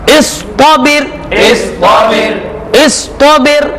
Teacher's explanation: हमजा सौद जेर इस, हमजा सौद जेर इस, तो जबर तो, इस तो, बा रा जेर बिर, इसमें रा मोटा पढ़ना है, लेकिन इसे पढ़ेंगे हम रा को बारीक, क्योंकि पहले क्या है? जेर है।